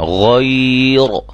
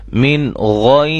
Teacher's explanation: را ساکن سے پہلے یا ساکن آ جائے تو اس را کو ہم باریک پڑھیں گے